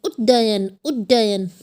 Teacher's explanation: ये आधा ड और पूरे ड की आवाज़ आ गई